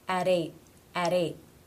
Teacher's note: it would be the flap T sound or the D sound